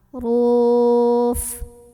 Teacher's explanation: Roknya ini dibunyikan secara tafkhim karena roknya barisnya dhammah. Maka bacanya tebal. Ruf. Ada mad arid li sukun karena ada mad tabi'i bertemu dengan huruf yang disukunkan.